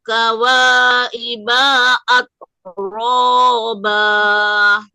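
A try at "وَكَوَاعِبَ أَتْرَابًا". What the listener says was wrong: Iya, bukannya ada iko doang, semua perpindahan kata sama kata seperti tadi wakawa iba. Jangan wakawa iba. Betul, baknya tadi dibaca panjang.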